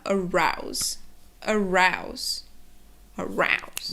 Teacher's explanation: and u combination creates a diphthong the ow sound and um the next thing is that the s makes a z sound · the o and u combination creates a diphthong the ow sound